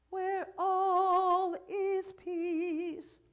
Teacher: we can put a little glottal on is